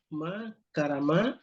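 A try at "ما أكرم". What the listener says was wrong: Ma, jangan makaramanya fi'il madi kok ditambah sehuruf. Ma akrama.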